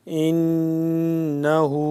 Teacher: نون مشدد پہ ہم نے غنہ کرنا ہے